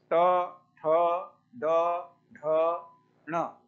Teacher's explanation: अपनी जिह्वा कहाँ जाती है ये देखिए, कहाँ जाती है तो दांत से थोड़ा ऊपर, वही स्थान मूर्धा है। क्योंकि ये पाणिनि ने सूत्र में लिखा है कि ट वर्ग का उच्चारण मूर्धा से होगा।